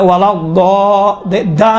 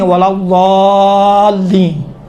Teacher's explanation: دال اور ضاد میں فرق ہے. دال تھوڑا سا باریک ہے، ضاد اسی دال کو تھوڑا غلیظ بناؤ، موٹا بناؤ تو ضاد بن جاتا ہے